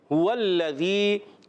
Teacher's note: ہا ادا ہوتا ہے حلق کے نیچے والے حصے سے، ہا پر پیش ہے، حرکات کو بغیر کھینچے ادا کریں گے.